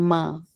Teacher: मीम जो है वह दोनों होठों का सूखा हिस्सा मिलकर लगता है ना तब वो हर्फ हमारा मीम अदा होता है। · میم جو ہے وہ دونوں ہونٹوں کا سوکھا حصہ مل کر لگتا ہے نا, تب وہ حرف ہمارا میم ادا ہوتا ہے